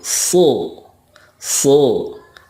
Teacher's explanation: Shod makhrajnya sama dengan Sin, tetapi pangkal lidahnya diangkat atau digemakkan